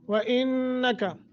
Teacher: الرازقین احمد خیر الرازقین زا قاف کو موٹا کرنا ہے، وَإِنَّكَ نون مشدد ہے غنہ کریں گے